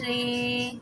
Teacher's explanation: اچھا رے بولنا ہے ہم نے، ری نہیں بولنا ہے، یہاں پہ ہم نے اسے مجہول پڑھنا ہے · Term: امالہ